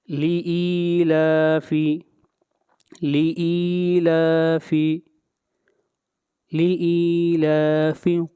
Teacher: یہاں پر ای کو 1 الف کے برابر لمبا کریں گے · اس کے بعد لام ہے، لام کے اوپر بھی کھڑی زبر ہے، اس مد کو بھی مد اصلی کہتے ہیں، اس کو بھی 1 الف کے برابر لمبا کریں گے